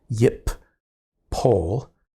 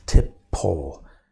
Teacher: the nun is resulted in the doubling of the next letter